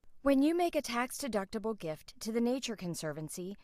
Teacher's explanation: Anyone hear the choppiness? Yep. Glottal stops.